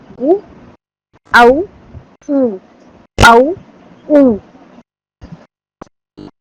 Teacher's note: واو دونوں ہونٹوں کو گول کرنے سے ادا ہوتا ہے